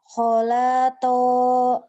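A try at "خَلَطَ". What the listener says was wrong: Khola. Kholato. Bukan. Yang panjangnya kho sama tonya ya non ya. Kho-nya panjang. To-nya panjang.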